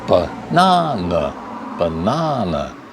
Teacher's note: Second syllable stressed, this first and the third unstressed.